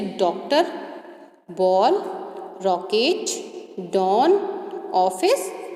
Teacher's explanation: अंग्रेजी के अ ध्वनि वाले वर्णों का भी हिंदी भाषा में प्रयोग हो रहा है। अ की ध्वनि आ और ओ के बीच की ध्वनि है